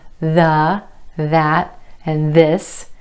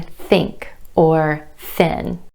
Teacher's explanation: there's voiced th as in the that and this and there's voiceless th as in think or thin